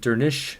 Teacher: Dernisk is pronounced Dernish since the final SC cluster sounds like an SH sound